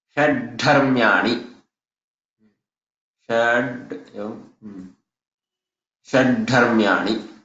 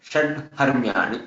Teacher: हकारस्य स्थाने महाप्राण ढकार